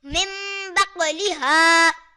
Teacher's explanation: یہاں نون ساکن کے بعد با آ رہا ہے تو یہاں ہم نون ساکن کو میم سے بدل کر اخفا کریں گے